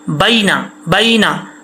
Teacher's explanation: با یا زبر بئی ہوتا ہے، بے نہیں ہوتا،